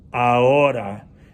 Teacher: It's spelled with an H, but we don't pronounce the H. It's silent in Spanish. A-O. Ahora means now.